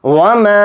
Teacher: मीम के साथ अलिफ मद्दा है तो मीम अलिफ ज़बर मा को खींचेंगे क्योंकि इसके ऊपर मद भी हो रहा है, मद्द मुनफसिल। तो मीम अलिफ ज़बर मा को 3 अलिफ की मिक़दार हम खींच कर पढ़ेंगे